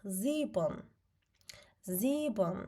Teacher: Ona görə biz S-nı Z kimi oxuyuruq. I birləşməsindən uzun i səsi gəlir.